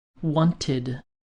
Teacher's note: some past tense regular verbs end with the ID sound